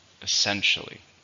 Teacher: How many syllables are in essentially? There are 4. The stress is in the second.